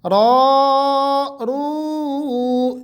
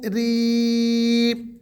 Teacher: جب را کے اوپر زبر اور پیش ہوگی تو اس کو ہم نے موٹا پڑھنا ہے، جب زیر ہوگی تو اس کو ہم نے باریک پڑھنا ہے